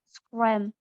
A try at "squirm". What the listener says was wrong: Not squim. Squirm. Need more more R. More R.